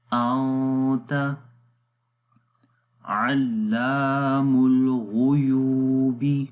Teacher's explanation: نون کی آواز کو ناک کے اندر چھپا کر پڑھیں گے اور اس کو ایک سیکنڈ لمبا کریں گے ، انت علام الغیوب، غین کو موٹا پڑھیں گے، علا، لام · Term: اخفا